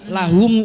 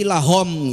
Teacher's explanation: peserta yang membaca dhammah itu jadi lebih dekat terdengar oleh saya itu mengarah pada o